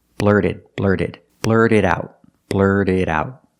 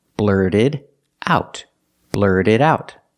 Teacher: The T in blurted is a fast D because it's after an R and before a vowel.